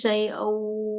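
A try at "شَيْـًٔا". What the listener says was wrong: Afwan yang awal A-nya hamzahnya dijelasin. Syai'au gitu Umi teh. Syai'au gitu. Syai'au a.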